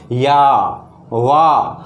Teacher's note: इनके उच्चारण में हमारे मुख के अंदर की जो हवा होती है उसको कहीं पे भी रुकावट पैदा नहीं होती। जैसे हम बोले या वाह, कहीं पे जीभ नहीं टकरा रही है, हमारी जो जीभ है वो सीधी सीधी मुख से हवा है, जो हमारे काकल है, काकल से सीधी सीधी हवा मुख होते हुए बाहर निकल रही है।